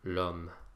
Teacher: an H, which is silent anyway, so essentially this word starts with the vowel o. And so the word for the for all of these is contracted to L apostrophe.